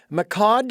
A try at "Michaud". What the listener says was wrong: Um nope. No. Please pronounce that for me. The D is silent. It's Misho.